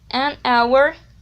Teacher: in hour, the h sound is not pronounced